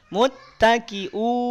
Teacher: Hati-hati hamzah. Harokatnya doma, kemudian ada wawu sukun, u-nya jangan dengung. Jangan sengau.